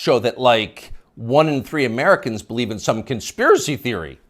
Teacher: You'll notice the upspeak, the rising inflection at the end of the sentence. That's a familiar tick in Brooklyn.